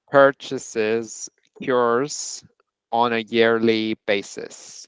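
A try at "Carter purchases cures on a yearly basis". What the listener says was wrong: Nicely done. Excellent. That yearly, that R.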